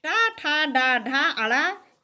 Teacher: टा, ठा, डा, ढा, अड़ा इन 5 का उच्चारण स्थान मूर्धा है।